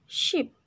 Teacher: sheep itu termasuk voiceless palato fricative karena huruf depannya kayak ada sh, kita baca itu seperti ini.